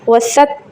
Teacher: علام الغیوب علام الغیوب غو ناٹ غونی غیوبی غیوبی وسط وستار العیوب یہاں بھی پیش ہے، ٹھیک ہے. وسط تا پہ رکنا ہے، دباؤ دینا ہے